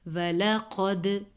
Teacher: قاف موٹا، دال پہ کلکلا، دال حروف کلکلا میں سے ہے